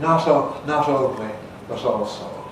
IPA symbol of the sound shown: t̞